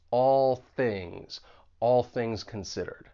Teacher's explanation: that there's a bit of Co articul ulation going on with that final dark L and all and then you move right into that voiceless th in things because the tip of your tongue is going to be behind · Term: co-articulation